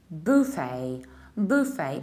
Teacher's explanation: you stress the first syllable